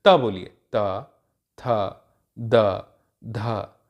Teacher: तो त थ द ध में क्या हुआ, आपकी जो जिह्वा है, जो जीभ है, वो दांत से टकराई, ये दंत व्यंजन कहलाएंगे।